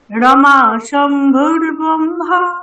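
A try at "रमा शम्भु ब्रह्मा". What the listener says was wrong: শম্ভু ব্রহ্মা, ভূ এখানে রেখ নেই। রমা শম্ভু ব্রহ্মা সুরপতি গণেশার্চিত পদো।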